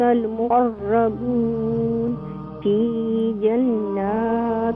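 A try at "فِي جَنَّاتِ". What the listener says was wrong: کم نہ کریں فی جنات بیکاز نون مشدد ہے.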